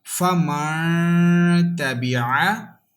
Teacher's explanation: Don't touch your tongue with upper side and make sound. You will have to take your sound into your nose. Then you can make this sound. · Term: ikhfa